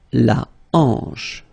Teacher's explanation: Remember, H here is not pronounced, so you get the sound en, hanche at the beginning.